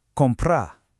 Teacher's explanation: That R at the end is super soft, almost like it isn't there. It's more of an ah sound.